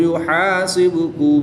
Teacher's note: با حروف کلکلہ میں سے ہے اور جب حروف کلکلہ ساکن ہوں تو ان میں کلکلہ خوب ظاہر کرتے ہیں، تو اس میں کلکلہ بھی خوب ظاہر کریں گے۔